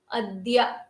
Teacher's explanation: these are used these ಅವ್ಯಯ ಪದಸ್ are used ಅದ್ಯ ಯ ಅದು ಧ ಅಂತ ಮಹಾಪ್ರಾಣ ಮಾಡಬಾರದು ಅದು ಅಲ್ಪಪ್ರಾಣ ದ ಗೆ ಯಕಾರ ಬಂದಿದೆ